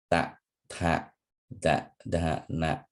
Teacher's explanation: pronounced with the tip of the tongue against the teeth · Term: dental letters